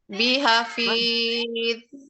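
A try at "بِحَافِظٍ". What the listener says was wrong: Nah, itu kan berhenti kan Bun? Berhenti nggak? Jangan berhenti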